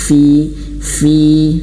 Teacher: Ada angin fi huruf fa di sini. Fi ya, jadi bibir bawah menyentuh ujung gigi seri atas. Fi, dan ada angin fi.